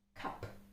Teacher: it is an aspirated k sound it's a vlar plosive voiceless consonant that is the nature of